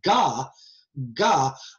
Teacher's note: I'm putting the back of my tongue up against the roof of my mouth